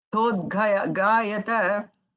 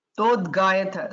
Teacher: There Ga is not Mahaprana. Tha is Mahaprana.